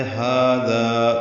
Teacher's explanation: اس کا الف مدہ بھی پر ہے، لو واو مدہ ہے، ہاذا دونوں برابر لمبے کریں گے، ہا اور ذا نرمی سے ادا ہوگا۔